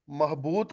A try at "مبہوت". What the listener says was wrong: इसमें भी बे पहले है ना, बे हे ते ये मादा है, तो उर्दू में भी मबहूत में बे हे ते आता है।